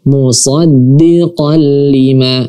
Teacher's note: Langsung saja kita masukkan tanwinnya ke lam, kemudian langsung kita baca lamnya tanpa didengungkan. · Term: idgham bila gunnah